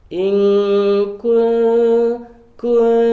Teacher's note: Walaupun menutupi huruf selanjutnya, tapi pada sifat a'la ini posisi lisannya hanya bersiap-siap saja, belum menuju ke huruf ta begitu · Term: ikhfa aqrab